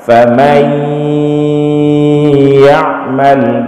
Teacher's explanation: ketika sedang kita baca ya itu tetap ada gunnah yang keluar dari hidung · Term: idgham